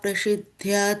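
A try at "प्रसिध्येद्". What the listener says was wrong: Prasidhyed. This is E is there, so it won't be prasidhyat. Yeah, dhyed.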